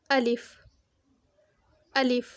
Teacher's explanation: अलिफ मुंह के खाली हिस्से से निकलता है। मुंह के खाली हिस्से से जिस तरह से हम बोलेंगे अलिफ अलिफ।